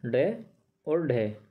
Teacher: और मूर्धा, मूर्धा यानी कि हमारे मुंह का ऊपर वाला हिस्सा जो होता है, दांत के थोड़े से पीछे वाला ऊपर की साइड, मूर्धा को झटके से, मतलब जब हम बोलेंगे तो टक से लगेगी और कुछ दूर तक छू कर के आता है, तो वे कहलाते हैं उत्क्षिप्त व्यंजन।